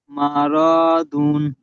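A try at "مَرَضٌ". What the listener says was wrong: টান হয়ে যাচ্ছে মারাদুন। র, জি রটি টান হয়ে যাচ্ছে মারাদুন। দুন হয়ে যাচ্ছে মারাদুন, মারাদুন।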